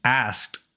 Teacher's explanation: if that sound is unvoiced like an asked Ed is pronounced t